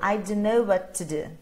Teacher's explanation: Só de 3 T's eu reduzi para 1. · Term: reduced sound